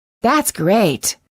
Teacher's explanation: you will sometimes hear Americans release the final T if they do it's usually at the end of a phrase